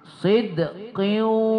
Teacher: tidak lagi kita baca sidqin, tapi kita baca dia waw itu bertasdid. Sidqiu, tapi karena dia ma'al gunnah kita dengungkan. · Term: idgham ma'al gunnah